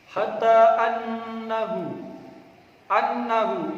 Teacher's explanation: ini juga bacaan hunah harus panjang dua harakat tidak boleh lebih tidak boleh kurang